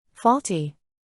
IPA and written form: ˈfɔl.ti (Faulty)